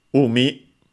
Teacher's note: a compound of umi, accented on the first one, which means sea, ocean